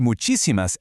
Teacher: The word muchísimas ends in an S, so rule 1 dictates we should stress the second to last syllable, but natural Spanish speakers stress the third to last syllable. Because it breaks the rule, we slap a visual accent mark right there on the I.